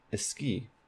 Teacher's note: in Spanish they don't like this SK consonant cluster in the onset